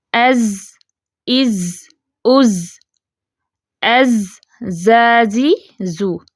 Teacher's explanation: زا کی آواز میں بزنگ ساؤنڈ ہے، کپ کپاہٹ ہے، سین اور صاد کی نسبت زیادہ ہے۔